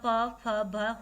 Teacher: प, फ, भ, होठ आपस में लगते तो ओष्ठ्य व्यंजन है।